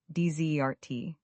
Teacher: Dessert, the sweet food after a meal, has the stress on the second syllable and a Z sound